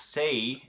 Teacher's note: Say has a diphthong, and that's why we spell it with an A and a Y, because that vowel is changing as you go through the word say